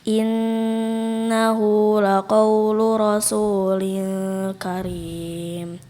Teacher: Innahu laqaul dipanjangkan gunnahnya.